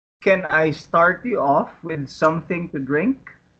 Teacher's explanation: since this is a yes-or-no question the intonation rises at the end